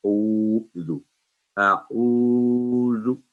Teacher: آئین تھوڑا سا منہ گول کر کے